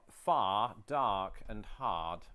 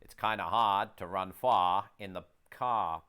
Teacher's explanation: The beauty of that kind of old world Bostonian English is that it doesn't adhere to the same rhotic pattern that a lot of American English does, where you pronounce that final R.